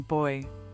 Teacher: this sound is created by rounding your lips and then moving them into a tight circle